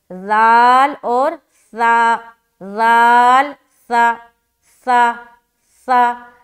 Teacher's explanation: सा में सीटी आवाज़ नहीं आएगी, नरमी के साथ अदा करेंगे, जिस तरीके से हम जाल को अदा करते हैं ना, जाल और सा का मखरज एक ही है, ठीक है।